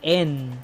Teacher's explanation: con la n no trato de cerrar los labios al final sino que hago lo contrario los mantengo separados